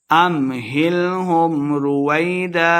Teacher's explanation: سے پڑھنا ہے، امہلہم رویدا، وائی کو لمبا نہیں کریں گے، واؤ کے اوپر دونوں ہونٹوں کو ہم نے گول کر کے پڑھنا ہے